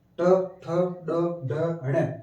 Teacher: इनका उच्चारण करते समय जीभ मुर्दा को स्पर्श करते हुए हवा को बाहर निकालती है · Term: मूर्धन्य वर्ण